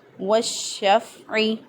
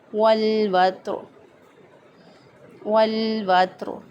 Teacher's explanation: والشفع میں یہاں پر ادغام شمسی ہوا ہے، اور والوتر اس میں لام کا اظہار قمری ہوا ہے